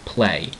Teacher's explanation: you don't hear the consonant y sound it's actually silent it's just play